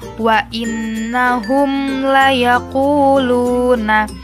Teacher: hukum bacaan izhar syafawi ini juga dibaca dengan jelas, tidak usah didengungkan